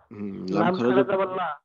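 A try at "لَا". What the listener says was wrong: জি, লা, এখানে আবার ল বলা যাবে না, পাতলা লা।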